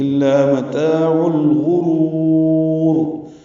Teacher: را کو لمبا کریں گے وقفاً تو دوسری را بھی پر ہو جائے گی. الا متاع الغرور، وقف کریں گے را پر ہوگی، ملائیں گے را باریک ہو جائے گی.